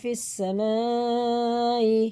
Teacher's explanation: یہ مد متصل ہے، 4 الف کے برابر، ہمیں اسے کھینچ کے پڑھنا ہے کیونکہ اسی کلمے میں حمزہ آ رہا ہے۔